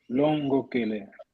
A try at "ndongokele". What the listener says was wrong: Quer dizer, primeira pessoa mesmo, o nasal tem que se ouvir bem, senão vai fazer confusão com a segunda ou terceira pessoa. Não, ndongokele.